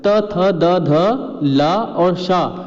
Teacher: त थ द ध ला और शा, इनका उच्चारण दंत से होता है